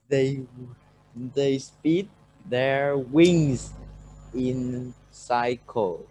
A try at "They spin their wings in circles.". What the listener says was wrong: Not cycle, circles. Not cycles. Circles.